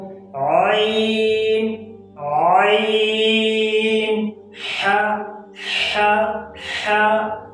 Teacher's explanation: आइन हा अदा होते हैं वस्ते हलक से, यानी गले के दरमियान से, गले के बीच वाले हिस्से से